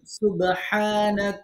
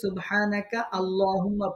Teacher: এই সুবহানাকা যদি আমরা থামি সুবহানাক তাহলে আল্লাহুম্মা আলাদা পড়া যাবে আমরা যেহেতু মিল করে পড়তেছি সেহেতু আমরা কাফকে এর সাথে মিল করে দেব লামের সাথে